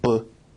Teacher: is considered a voiced bilabial stop